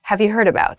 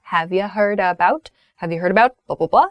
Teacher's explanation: So the you becomes shortened to ya.